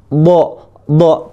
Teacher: Makhrajul hurufnya dari tepi lidah yang kiri atau kanan ya boleh dua-duanya ya. Tempelkan ke pangkal gigi Graham sampai ujung gigi saya atas.